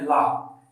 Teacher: यहाँ जो है जब हम ला का उच्चारण करते हैं ला, तो जो हमारे शरीर से प्राणवायु निकलती है तो वो दोनों जो जीवा है, जीवा के दोनों साइड से या बगल से निकल जाती है। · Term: पार्श्विक